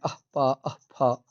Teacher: पा और फा से पहले अर्ध विसर्ग की तरह लिखे जाने वाले अथवा उच्चरित होने वाले जो वर्ण हैं उसको पद्मानीय कहते हैं।